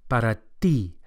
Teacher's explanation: As with the soft D for dos we saw in the last lesson, the Spanish T is also softer than English and produced with the flat of the tongue against the gum ridge